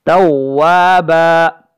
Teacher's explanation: چونکہ وقف کریں گے یہاں پہ تو توابا با دو زبر بن جو تنوین ہے وہ ختم ہو جائے گی